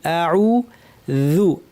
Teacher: আ শক্ত করে কণ্ঠের গোড়ার থেকে